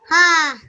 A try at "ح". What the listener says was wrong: So, with the ha, if you could say with a strong voice, ha. A bit more stronger from the middle of your throat, ha. I want you to imagine, remember, imagine on a cold day and you blow out and you see smoke coming from your mouth, don't you? You say ha. So I want that kind of ha. So imagine you can see smoke coming out.